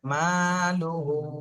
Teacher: মিম আলিফ জবর মা এক আলিফ টান দিতে হবে